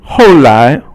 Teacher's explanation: ho is fourth tone and 来 is second tone